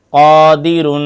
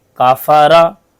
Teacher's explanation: मोटी होती है जैसे रबा वलन कफ और काफ में फर्क कफ की आवाज मोटी होती है जैसे कादिर काफ की आवाज बारीक होती है जैसे कफारा मोटे हुरूफ सात रूफ हमेशा मोटे पड़े जाते हैं · قاف اور کاف میں فرق، قاف کی آواز موٹی ہوتی ہے جیسے قادرن، کاف کی آواز باریک ہوتی ہے جیسے کافارہ، موٹے حروف، 7 حروف ہمیشہ موٹے پڑے جاتے ہیں۔